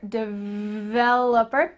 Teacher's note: Make sure that when you pronounce this, that V has some vibration here.